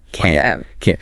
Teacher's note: can't expressing inability is longer and stressed